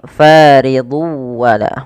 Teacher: bukan lagi faridun wala tapi tanwinnya masuk ke wau